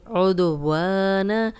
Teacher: الف مدہ ہے، خالی الف پیچھے واو پہ زبر، 2 حرکات لمبا کریں گے